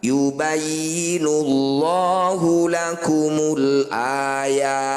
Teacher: Ya, panjangkan 6 harokat, huruf terakhir sukunkan. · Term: mad arid lis sukun